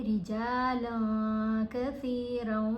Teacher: जैसे रिजालन में जो नून है ना उसको नाक में छुपा लेंगे